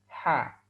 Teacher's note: Huruf ini ha kemudian ada yang ada di atas penggorokan kita huruf Ha ini sifatnya adalah alhams juga terdengar nafas yang mengalir · Huruf H ini sifatnya adalah al-hams, juga terdengar nafas yang mengalir. H. Maka secara praktis, ketika kita mengucapkan huruf H ini, sama seperti kita setelah minum air panas atau teh panas.